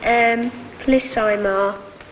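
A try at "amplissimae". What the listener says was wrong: Amplissimar. Emar, not Imar.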